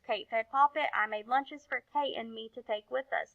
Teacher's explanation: I just kept reading. I didn't add any rises or falls in my voice. I didn't stop at punctuation.